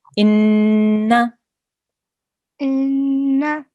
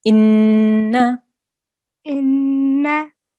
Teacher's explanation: the sound that the noon will make will be for 1 second only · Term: noon gunna